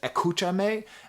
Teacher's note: to escucha me which is like where did the S go if you want me to listen to you why aren't you pronouncing the S